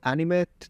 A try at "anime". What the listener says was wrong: Did you hear that? He didn't even mean to say T. It wasn't in what he was saying.